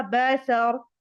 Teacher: را کو ساکن کر دیا، را پر سٹاپ لگا دیا